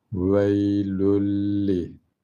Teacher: İdgam bila gunne. Çünkü tenvinden sonra lam geldi. Veylün denmez artık.